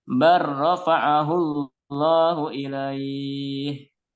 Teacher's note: Artinya lam sukun atau bunyi dari bal itu tidak terdengar, tapi masuk ke huruf ro. Menjadi bar. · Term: idgham mutaqaribain